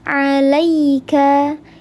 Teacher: Ya sukun sebelumnya harakatnya fathah. Dibacanya dilembutkan dua harakat tidak dibaca panjang. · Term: harfulin